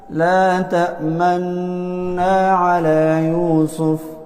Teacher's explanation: نو په دې کې د ادغام طریقه به دای چې د ادغام سره اشمام لازم دی، چې ته کله دا لولې د نون د غنې سره سره و فورا شونډې ګول کې د غنې د ختمېدلو پورې، دې ته وایي ادغام مع الاشمام